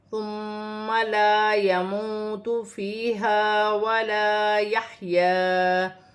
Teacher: ہا کو اپنے مخرج سے ادا کیا جائے گا، حروف حلقی میں سے ہے · میم مشدد میں غنہ کیا جائے گا